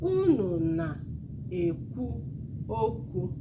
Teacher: High low low low high high mid.